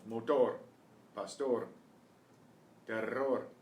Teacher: Try to see if you can train your tongue to do the trill. The R at the end of a word is kind of like an almost trill.